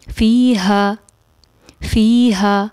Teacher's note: پھر فیہا، یہاں پر اس کو ہم فی ہا نہیں پڑھیں گے، یہاں پر ہم اس کو اقصی حلق سے یعنی آخری حلق کے آخری حصے سے فی ہا کو ادا کریں گے